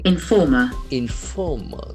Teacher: The accent falls on the second syllable. There are three syllables.